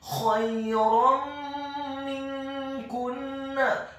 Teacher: Hukum bacaannya adalah idgham bil gunnah, memasukkan dengan dengung.